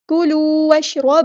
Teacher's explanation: واو کو ہم نے شین کے ساتھ ملا دینا ہے، حمزۃ الوصل ہمارا ڈراپ ہو جائے گا ، شین ساکن کو ہلانی ہے، را ہمارا ہیوی لیٹر ہے